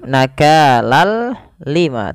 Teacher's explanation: Idghamnya adalah kita memasukkan tanwin ke huruf lam, seraya kita hilangkan suara nunnya dan kita ganti dengan huruf lam. Awalnya nakalan ketemu lam, ganti dengan lam nakalal lima, tapi tidak disertai dengan gunnah, tidak ditahan seperti ini. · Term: idgham bila gunnah